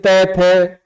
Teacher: हमारी जीभ दांतों के पास टच करती है